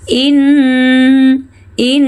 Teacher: Dengungan dan panjangnya berbeda, lho. Nun with tashdid must be hummed